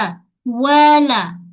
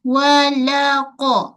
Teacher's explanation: pada lam kita gunakan tepi hujung lidah menyentuh pada gusi gigi atas walaqa. Pada qaf.